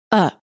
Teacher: the vowel within the unstressed syllable is reduced and becomes a neutral short vowel called the schwa and is pronounced as a it can be spelled with a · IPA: /ə/